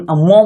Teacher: और ये मो जब बोल रहे हैं तो मो बोल रहे हैं, नाक भी लग रहा है, ओठ भी लग रहा है, तो इसलिए इसे ओष्ठ नासिका